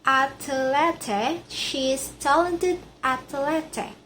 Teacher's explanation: The word athlete gains a middle vowel between t and l making it easier to articulate.